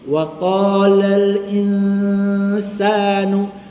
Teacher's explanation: dengung nun baru pergi sin itu ikhfa